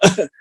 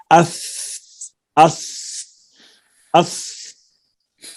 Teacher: سا کا مخرج ہے زبان کی نوک اور ثنایا علیا کا کنارہ جو مسوڑوں کے ساتھ ہے۔ اب اس کو ہم ادا کرتے ہیں، تو جب زبان اپنے مقام پہ مسوڑوں کے ساتھ لگے گی اور سا ادا ہو رہا ہوگا تو آپ دیکھیں گے کہ کیا جو مخرج اساتذہ نے لکھا ہے یہ آواز وہیں پہ جا کے ٹھہری ہے۔